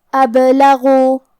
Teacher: کلمت ابلغوا میں یہاں حرف الباء پہ جزم ہے، تو کیونکہ با حروف القلقلہ میں سے ہے تو ہمیں یہ حرف کو ہلاتے ہوئے یہ کلمہ کو پڑھنا ہے ، ابلغوا۔ حرف الغین کی ادائیگی حلق کے اوپر والے حصے · یہ حرف کو ہلاتے ہوئے یہ کلمہ کو پڑھنا ہے، ابلغوا۔ حرف الغین کی ادائیگی حلق کے اوپر والے حصے سے ہے اور غین حروف تفخیم میں سے ہے، تو ہم یہ حرف کو موٹی آواز میں پڑھیں گے